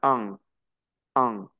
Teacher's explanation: una a y una n como si me taparan la nariz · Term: nasal